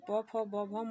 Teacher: ओठ के चिपकने से यह प वर्ग का उच्चारण होता है दोनों ओठ आपस में जब चिपक हैं तो प फ ब भ म का उच्चारण होता है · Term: ओष्ठ व्यंजन